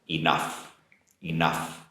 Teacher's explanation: in the spelling but the pronunciation is an f sound enough the vowel sound for enough is an unstressed uh sound